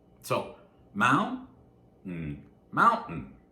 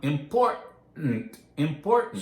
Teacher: Usually when we make this sound, we have words that have 2 or more syllables. The first one is stressed, and then we have a T, not always, but usually a T that starts the next syllable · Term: glottal stop